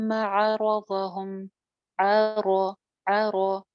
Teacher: अ पे होंठ आपके गोलाई की तरफ माइल नहीं होंगे